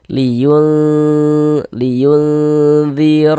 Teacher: cara membaca ikhfa itu dibaca samar dan berdengung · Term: ikhfa hakiki ausat